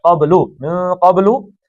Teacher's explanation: قاف موٹا پڑھنا ہے، با کا کلکلہ ہے